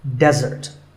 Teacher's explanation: This word refers to something sweet that's eaten at the end of a meal, and it should not be confused with dessert. Here, the stress is on the first syllable, which is de